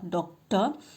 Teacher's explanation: i have not used the sound for r it is a dropped sound